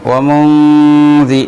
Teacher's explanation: এখানে নুন সাকিনের পরে জাল আসছে ইখফা হয়েছে এই জন্য গুণনা করতে হবে